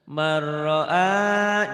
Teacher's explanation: nun mati atau tanwin ketemu ro, idgham bila gunnah